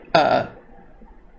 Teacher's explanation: a schwa is the unstressed central vowel represented by the symbol upside down E in the international phonetic alphabet